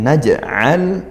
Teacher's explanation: naj'al jim sukun dibaca mantul qalqalah sughra